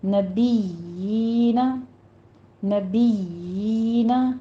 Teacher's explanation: یا کی آواز آپ نے کھینچنی ہے، ہونٹوں کو پست کرنا ہے اور 2 کاؤنٹ کرنے ہیں